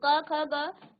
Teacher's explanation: आपके कंठ से आवाज आ रही है